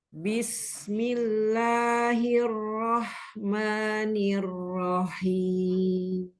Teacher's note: Ini di lam dan ma-nya enggak tebal, Um. Tipis.